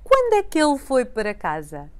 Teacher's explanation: The beginning now blends the first four words together into quando é que ele. We don't hear the O of quando, and the que blends with the il since we have the same vowel at the end of a word and at the beginning of the following.